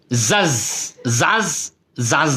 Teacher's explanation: এই যে জিম কলকলার হরফ, এই যে দেখেন ধাক্কা দিয়ে পড়ার হরফ জিম